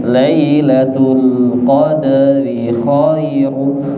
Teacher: Lailatul Qadri nya kasroh ri, kemudian pendek, tipis pendek.